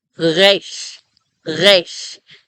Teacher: So I make it at the back of the throat. It's really, I can feel vibration happening.